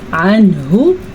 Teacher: نون ساکن کے بعد ہا آ گیا ہے تو یہاں پہ کسی قسم کا کوئی غنہ نہیں بنے گا، یہاں پہ اظہار کا قاعدہ ہو رہا ہے، اسے ہم کیسے پڑھیں گے؟